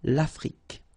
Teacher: Final E, it's only the K at the end that you will hear.